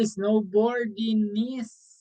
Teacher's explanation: the G sound is not pronounced